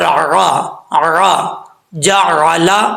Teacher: عین کو صحیح طریقے سے ادا کرنا ہے اپنے مخرج سے، اور حمزہ کی آواز نہیں آنی چاہیے